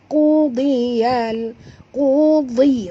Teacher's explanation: Ku keluar daripada pangkal tekak